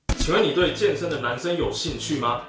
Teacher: 在这句话里，请、你、有这三个三声全都是半三声